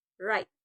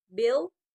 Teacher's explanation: air flows along the sides of the tongue